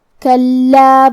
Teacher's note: کلمت کلا میں حرف اللام پہ تشدید ہے، لہذا دو حرف کے برابر ہم حرف اللام کو پڑھیں گے کیونکہ تشدید کی اصلیت دو حرف ہے.